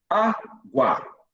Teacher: Já não é mais dígrafo. O U, ele vira uma semivogal. Então, semivogal mais vogal vai ser um ditongo.